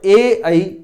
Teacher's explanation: और ए ऐ ये कंठ से बोले जाएंगे, ये तालव्य, ये कंठ तालु से बोले जाएंगे, तो ये कंठ तालव्य स्वर कहलाएंगे।